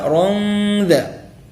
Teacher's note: Rongda, ya, itu tanwin bertemu dengan huruf dzal adalah ikhfa hakiki. Hukumnya dibaca dengan gunnah, dibaca dengan dengung. Jangan naron dha, salah.